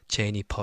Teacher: no F sound in Korean. So it's Jennifer, like the P sound. Jennifer. So a lot of Korean people, they struggle with pronouncing the F sound.